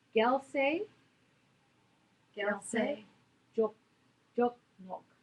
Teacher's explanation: you get this sort of nasal sound, so it's like an NGW sound altogether.